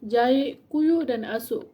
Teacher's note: Penggelotalan berlaku apabila fonem kah di akhir kata berubah menjadi hentian glotis